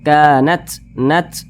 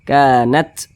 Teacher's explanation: ketika membunyikannya itu ada sedikit desisan angin yang keluar daripada mulut kita. Kanat, nat. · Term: sifat hamas